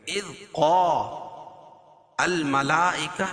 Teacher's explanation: اذ قا الملائکہ میں مد متصل ہے کیونکہ حروف مدہ کے بعد حمزہ جو ہے اسی کلمے میں وہ تو مد متصل ہوتا ہے، اس میں توسط اور طول ہے، یعنی 2 الف سے لے کر 5 الف تک اس کو کھینچ کے پڑھیں گے